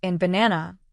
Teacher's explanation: Emphasis on certain syllables. In banana, the second syllable is stressed. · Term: Stress patterns